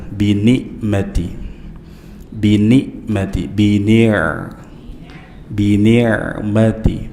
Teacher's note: ain tengah-tengah tenggorokan jangan dibaca mirip Hamzah